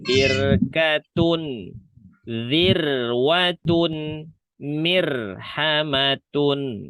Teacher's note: Ini dua-duanya dibaca tebal. Tapi kalau ro sukun sebelumnya kasroh baris bawah, maka roknya dibaca tipis.